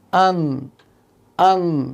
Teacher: জিহ্বার আগা সামনের উপরের 6 দাঁতের তালুর সাথে লাগিয়ে উচ্চারিত হয় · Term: নুন